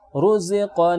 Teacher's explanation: ketika WhatsApp contohnya misalnya rozaqo nah huruf ra yang berharakat lemah maka dibaca tebal memenuhi mulut ketika mengucapkannya